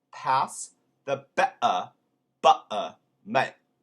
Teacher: instead of being like mate with a strong T, in Cockney they tend to just leave them off